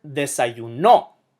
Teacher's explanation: it emphasizes the second-to-last syllable